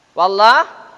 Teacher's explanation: Di situ berhenti saja. Wallah, harokat fathah menghadapi lam jalalah, maka lam jalalah itu dibaca tebal atau dibaca tafkhim